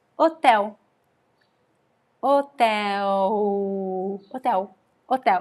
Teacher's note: The stress here is in the vowel E, which is an open E, hotel. There is no L.